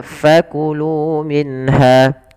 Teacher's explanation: Kemudian pada lafal fakulu minha fa alirkan nafasnya fa jangan dibaca pa